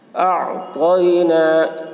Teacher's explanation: اعطینا، یا کے اوپر جزم ہے، اعطینا، یا ساکن سے پہلے زبر ہے، یا لین ہوا، اس لیے یا لین کو نرم آواز کے ساتھ جلد پڑھیں، معروف پڑھیں، مجھول آواز سے بچیں۔